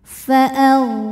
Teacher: huruf ro dibunyikan secara tafkhim sebab ro berbaris di atas yaitu baris fathah maka dibacanya tebal